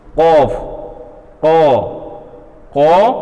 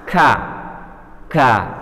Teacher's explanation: huruf qaf sama kaf itu makhrajnya dari pangkal lidah, yang dimana pangkal lidah agak ke depan namanya kaf